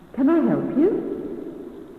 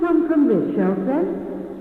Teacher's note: Notice the shop assistant's polite, rising intonation.